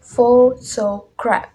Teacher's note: Pressure on first syllables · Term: primary stress